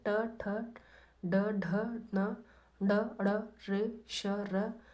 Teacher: इनका उच्चारण स्थान मूर्धा है और नामध्वनि है मूर्धन्य